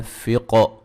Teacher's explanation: قاف کو موٹا ادا کریں گے، قلقلہ کریں گے